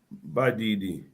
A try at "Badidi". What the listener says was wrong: Can you say it again? Badidi. Long vowel. If you say, listen to my pronunciation. If you say by did you mean you are adamant. So be careful.